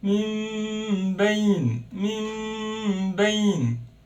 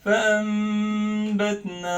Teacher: If you have ba after Noon Sakinah or Tanween, change the sound of Noon into meme, hide it, and do غنة for 2 beats. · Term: Iqlab